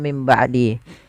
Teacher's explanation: karena datang setelahnya huruf ba maka kita ganti suara Nun ini menjadi suara mim yang ada warna hijjaunya di atas kecil itu maka menjadi mim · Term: iqlab